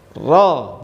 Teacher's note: Bergetarnya ro ini cukup sekali saja, jangan berkali-kali. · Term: takrir